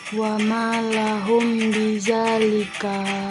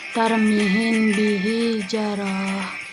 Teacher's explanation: Adapun cara membacanya harus dibunyikan samar-samar di bibir dan didengungkan. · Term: ikhfa syafawi